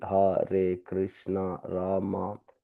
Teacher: The tongue is slightly bent backwards and vibrates at the topmost part of the palate.